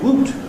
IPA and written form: w.uː.t (woot)